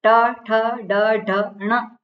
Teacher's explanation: પાંચ પાંચ વર્ણ જે છે એમાં છેલ્લો જે વર્ણ છે એને અનુનાસિક કહેવામાં આવે જેને નાકની સહાયથી બોલવામાં આવે